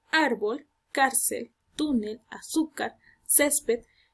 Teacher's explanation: lleva la mayor entonación de voz en la penúltima sílaba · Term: sílaba tónica